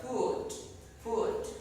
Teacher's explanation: The longer is not foot but food.